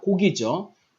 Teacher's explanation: 발음되는 고기 앞에 기역과 뒤에 오는 기역을 K와 G로서 나누어서 음운으로 구분합니다